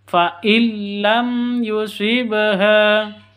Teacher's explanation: mim mati bertemu dengan Ya cara bacanya jelas terang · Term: izhar syafawi